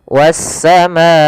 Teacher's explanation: pada lafal wassama di sini ada alif lam syamsiyah kembali yaitu alif lam yang ditulis tapi tidak terbaca lamnya sehingga langsung ke huruf Sin yang berharakat tasdid